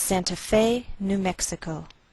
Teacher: We place the most stress on Fe. That's our primary stress.